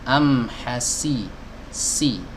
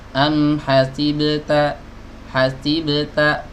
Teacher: Tapi kalau huruf sin harus diiringi dengan sofir ya. Ini sofir, suara desis yang terdengar itu tajam.